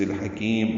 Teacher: ہا وسط حلق سے ادا کریں گے، کاف باریک ہے، لمبا کریں گے، میم ساکن پہ اظہار شفوی ہوگا، وقفاً میم ساکن ہو جائے گا۔